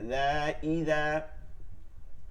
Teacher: জাল জিহ্বার আগা থেকে